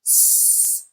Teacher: for the s sound, your vocal folds are not doing anything. They're just open and the air is just passing through them, so you don't feel anything.